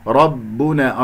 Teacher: والباء شديدة مجهورة، بمعنى أنه لا يجري فيها الصوت ولا يجري فيها النفس